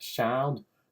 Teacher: turning the S sound into a bit of a sh sound